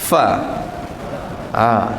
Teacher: 4 batang dari gigi atas dikenakan bahagian bibir bawah. Kemudian angin, ada angin kita ada huruf fa. Ada angin, hembuskan dia, kemudian masukkan suara fa.